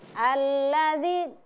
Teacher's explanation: Jadi di ayat kedua itu ada huruf zal ya, huruf zal berharakat kasrah kemudian bertemu dengan ya sukun. Maka itu ditahan selama dua dua ketukan.